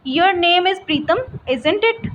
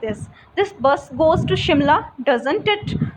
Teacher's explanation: whenever you are not sure about whether that person agrees with you or not, then you will speak with a rising intonation